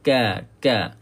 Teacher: sikit sangat hamas yang keluar ketika menyebut kaf dan juga ta